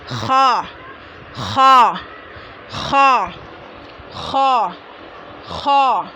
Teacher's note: हलक के मुंह की जानिब वाले हिस्से से अदा होगा। खा हलक के मुंह की जानिब वाले हिस्से से अदा होगा, है ना।